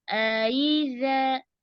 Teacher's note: Jelaskan keluar dari pangkal tenggorokan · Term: Hamzah